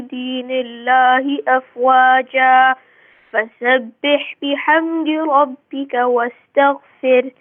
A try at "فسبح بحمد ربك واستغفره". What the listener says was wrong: If you can pay attention to the word wastaghfir, if you can make the ha, the last letter ha, more clear, please.